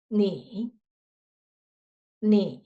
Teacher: third tone start very low and keep voice in your throat. So touch your throat and you can feel that will be shake.